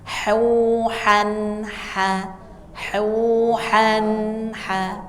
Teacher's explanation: Jadi ketika bertemu dengan huruf-huruf halq itu dibaca betul-betul tidak mendengung panjang ya. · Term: idhar